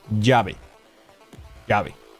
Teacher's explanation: we don't have a difference between V and B. For us is always B.